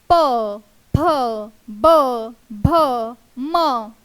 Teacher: प फ ब भ म यांचा उच्चार आपण जेव्हा करत आहोत तेव्हा ओठांवर होतात आहे म्हणून त्यांना आपण ओष्ठ वर्ण असे म्हणतो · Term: ओष्ठ्य वर्ण